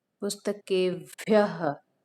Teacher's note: उसको जो विसर्ग लिखा होता है उसको हा उच्चारण करते हैं